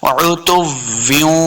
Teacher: واو کو جب بھی پڑھیں گے دونوں ہونٹ گول ہوں گے تب واو کا صحیح مخرج ادا ہوتا ہے